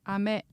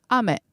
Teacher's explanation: ame with rising pitch means candy but ame with falling pitch means rain